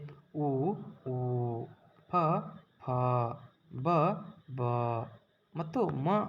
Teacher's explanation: ಒಂದು ಅಕ್ಷರಗಳು ನಮ್ಮ ಒಂದು ತುಟಿಯ ಸಹಾಯದಿಂದ ಹುಟ್ಟುತ್ತವೆ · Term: ಓಷ್ಟ ಅಕ್ಷರಗಳು